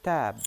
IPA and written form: tæb (tab)